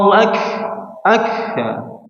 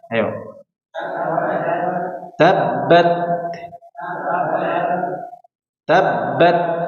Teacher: Jadi huruf Kaf sama huruf ta hanya nafasnya saja yang mengalir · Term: hams